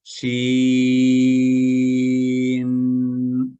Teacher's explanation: थोड़ा नून को लंबा करें, गुन्ना करें।